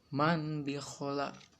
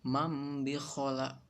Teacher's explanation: Di sini man bi khola, tapi di iklab dibacanya mam bi khola. Jadi nunnya diganti jadi mim.